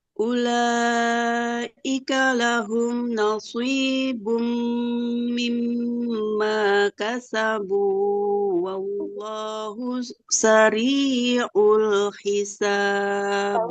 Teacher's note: Yang pertama shadnya bagus, sudah tebal, tapi nunnya jangan ke bawah tebal.